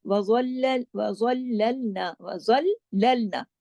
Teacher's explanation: आगे आ गया मोटा हर्फ, वज़ल्ललना, वज़ल्ललना, ज़ा मोटा पढ़ा जाएगा, बाकी तमाम बारीक हरूफ हैं